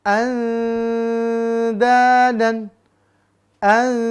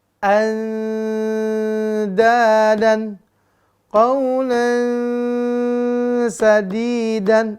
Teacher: nunnya samar dengungkan samar dengan sifat yang dominan lalu masuk ke huruf da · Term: Ikfa huruf Dal